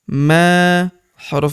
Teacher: Huruf ma kita panjangkan 2 harokat karena terdapat tanda alif di depannya